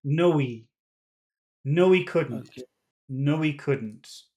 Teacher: sometimes the word he will just attach to the word in front of it